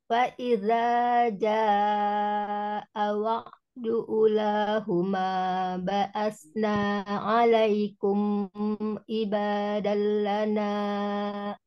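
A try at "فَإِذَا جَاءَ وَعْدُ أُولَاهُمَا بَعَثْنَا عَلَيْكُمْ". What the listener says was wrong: Tapi tadi U-nya dua. U, ula. Ula, ula. U-nya dua juga. Fa'idha ja'a wa'du ula huma ba'asna 'alaikum.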